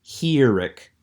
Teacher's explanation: Herik also has more of an I sound, a short sound, but I often pronounce the I as the I in machine, almost like a Spanish I, pronouncing it as a long E